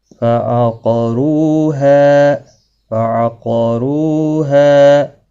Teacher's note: قاف مستعلیہ ہے، را پیش کی وجہ سے پر پڑھا جائے گا، رو واو مدہ بھی ہے، دیکھو واو ساکن سے پہلے پیش ہے، واو مدہ، اور ہا مدہ، الف مدہ، الف جب خالی ہوتا ہے تو پچھلے حرف کے اوپر جب زبر ہوتی ہے تو الف مدہ بنتا ہے.